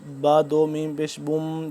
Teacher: یہ ایک تو تنوین ہے اوپر سے میم کے اوپر شد ہے، میم مشدد ہے تو یہاں پہ ہم غنہ کریں گے